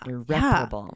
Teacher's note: So repair, the stress is on the second part of the word, but irreparable, the stress is on the second syllable